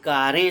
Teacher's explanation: उसी तरह से कारें शब्द में भी रे का उच्चारण करते समय नाक और मुंह दोनों से ध्वनि निकलती है, लेकिन वहाँ लगी हुई जो मात्रा है वह अनुस्वार की है, वहाँ अनुनासिक नहीं लगा सकते, क्योंकि उसके ऊपर की जो मात्रा है सिरोरेखा के ऊपर एक ही मात्रा लगी हुई है।